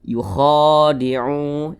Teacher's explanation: Jadi ini ada huruf kha, kemudian di atasnya ada alif kecil, maka huruf kha-nya dibaca panjang. Panjangnya itu 2 harokat atau 2 ketukan. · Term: mad tabi'i